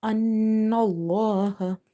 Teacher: أن الله. Again, noon is having shadda. So we will do nasalization in the noon sound.